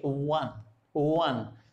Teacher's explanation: जैसे मैं आपको एग्जाम्पल देता हूं ओ एन ई, अब इसको बोले क्या बोलेंगे वन, वन, तो इसमें व कौन सा वो आएगा लिप्स से, दोनों लिप्स राउंड होते हैं, व, क्लियर।